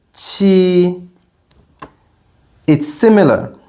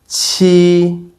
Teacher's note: raise the middle of your tongue this time to block the airflow and then slowly release the air